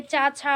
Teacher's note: इनमें पहला और दूसरा जो वर्ग का वर्ण आता है, जैसे का खा हो गया, दूसरे में चा छा हो गया, टाठा हो गया, पाफा हो गया, इस प्रकार ये सब क्या है, तो ये अघोष वर्ण है